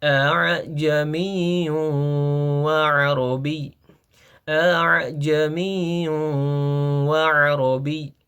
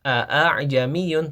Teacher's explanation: kita membaca hamzah yang pertama secara jelas kemudian kita membaca hamzah yang kedua secara samar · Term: tashil